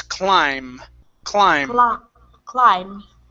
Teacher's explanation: now the b is silent at the end we do not want to pronounce that